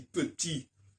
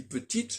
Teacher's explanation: si je dis petit, je n'entends pas le T. Si je dis petite, je l'entends. Donc le E indique la différence de prononciation.